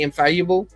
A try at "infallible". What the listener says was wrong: You keep on saying infallible. You're doing this EU thing when it's just It's just infallible.